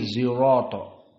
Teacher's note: sebagian Arab tidak bisa membaca so, sirato, tetapi zirato